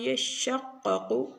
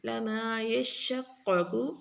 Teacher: دونوں قافوں کو موٹا پڑھا جائے گا